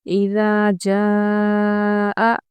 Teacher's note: جا پہ مد متصل ہے کیونکہ حمزہ ہم نے اسی کلمے میں پڑھا ہے